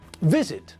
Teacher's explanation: visit has got two syllables but again the stress is on the first part of the word not the last part